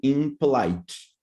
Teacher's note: you close your mouth both sounds are bilabial